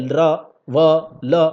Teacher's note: जब य बोलिएगा तो एक कंपन सी होती है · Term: घोष व्यंजन